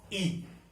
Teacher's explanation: जीवा का अगला भाग जो है, वहां से जब साउंड हमारा उत्पन्न होता है तो वो अग्र स्वर होता है